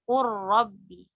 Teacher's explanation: Ini diidghamkan juga nih, idgham kamil. Qur rabbi, tapi idghamnya tanpa gunnah juga sama seperti mil ladunhu.